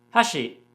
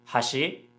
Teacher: what makes these words different is pitch accent they basically have different melodies